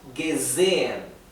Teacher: cuando la S es simple, cuando no está duplicada y está entre dos vocales, la S se pronuncia vibrada. Z, no es S, es Z.